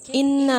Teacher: یہاں دیکھیں انا میں نون مشدد ہے، آواز کو ایک الف کے برابر ناک میں ٹھہرانا ہے اور غنہ کرتے ہوئے تشدید کو ادا کرنا ہے